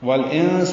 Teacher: جن میں نون مشدد پہ غنہ ہے، آواز ناک کے بانسے میں لے جا کر چھپائیں گے